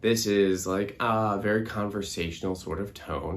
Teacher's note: you can kind of hear my voice is coming in and out a little bit because it's being elongated and I'm not giving enough air to support that low sound